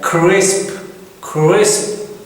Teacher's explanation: ये जो स और ज साउंड है, इनको थोड़ा सा हमने लंबा करके बोलना होता है, इसलिए इनको फ्रीकेटिव्स कहते हैं.